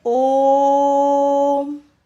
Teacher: इसमें उन दोनों से 3 गुना समय लगता है। दीर्घ स्वर से भी 3 गुना समय लगता है और इसमें स्वर के आगे एस का चिन्ह अंकित कर दिया जाता है, एस, जिससे कि हम इसका उच्चारण करते समय इसको आगे की ओर शब्द को बड़ा करके बोल सकें। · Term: प्लुत स्वर